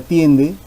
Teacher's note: Primero tenemos a la vocal cerrada I y después a la vocal abierta E, en ese orden, cerrada, abierta. La palabra tiende también tiene diptongo, concurrencia vocálica de vocal cerrada más vocal abierta.